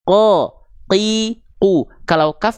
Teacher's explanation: Kalau qof tidak keluar percikan nafas.